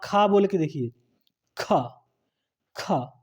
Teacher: खा का उच्चारण करते समय मुंह से अधिक वायु निकल रही है, हमें अधिक समय लग रहा है, अधिक दम लगानी पड़ रही है। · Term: महाप्राण